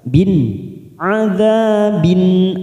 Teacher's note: Bin kasroh tanwin bertemu hamzah kasroh tanwin pada huruf ba bertemu hamzah namanya bacaan idhar halqi kita baca jelas.